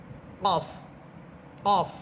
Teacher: এবং কফ হরফের সিফাত হচ্ছে কফ এটা মোটা হরফ, কফ এটা শক্ত হরফ। এটা মোটা করেও পড়তে হবে এবং শক্ত করে, অর্থাৎ আওয়াজটাকে একটু জোর দিয়ে সুন্দরভাবে পড়তে হবে, যাতে করে আওয়াজটা খুব জোরালো হয়। · কফ হরফের মাখরাজ জিব্বার গোড়া উপরের তালুর সাথে লেগে কফ হরফ। এবং কফ হরফের সিফাত হচ্ছে কফ এটা মোটা হরফ, কফ এটা শক্ত হরফ।